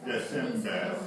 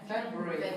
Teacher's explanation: the R on the end, the post-vocalic R sound disappears